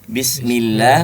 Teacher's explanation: Ya, hanya huruf-huruf hidung yang boleh masuk ke hidung. Bismillah lewat jauf, rongga mulut.